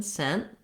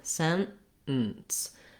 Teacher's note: Basically, I go up to make that T, but I don't release it. So I go to the N position, sent. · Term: stopped T